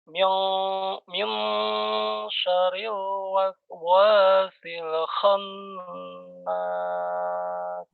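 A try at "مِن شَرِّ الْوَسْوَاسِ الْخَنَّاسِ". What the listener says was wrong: Ya, perhatikan dilamakan minnya. Dengungnya dilamakan. Min syarril waswasil khannas. Coba mad dua harokatnya diayunkan saja. Min syarril wasil.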